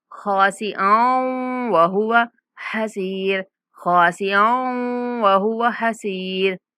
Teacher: हमजा को वाव के साथ मिलाते हुए गुन्ना के साथ इदगाम करेंगे।